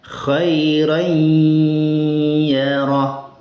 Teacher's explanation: Tapi sifat ghunah dari nun yang dibaca tanwin itu maka dia tetap ada. makhraj ya-nya terbaca dan sifat ghunah dari tanwinnya juga ikut terbaca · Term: idgham naqis